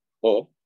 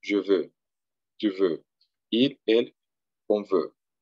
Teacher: Es una O estirando los labios. Nuestra O española es abriendo la boca, O, y esta es E, más cerrada.